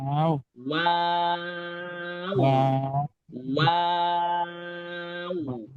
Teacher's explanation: যে আপনি অবাক হলে বলেন ওয়াও, ওয়াও এটা তো আপনি শুদ্ধ উচ্চারণ, যখন আপনি সত্যিকার অর্থে অবাক হন তখন ওয়াও বলার সময় আপনি কি করেন দেখেন, প্রথমে ঠোঁটটা গোল করে শুরু হয়, এরপর ঠোঁটটা আবার স্বাভাবিক হয়, আবার শেষে ঠোঁটটা গোল হয়ে শেষ হয়